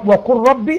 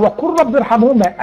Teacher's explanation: يبقى اللام والراء، تمام، وقل ربي ارحمهما، ادي اللام وقع بعد الراء يبقى حكم الادغام